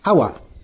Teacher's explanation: Notice the word hour. H is silent here. Hour start with a vowel sound. So, an is used before the word hour.